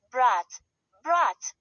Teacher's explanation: The only difference is the soft sign which makes the final T sound soft.